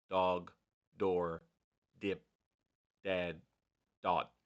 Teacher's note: The D sound has a stronger vibration than the B sound. You could really, especially like dog, because both the D and the G are both vibrating.